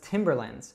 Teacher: any word that ends in land, usually we reduce land to lind.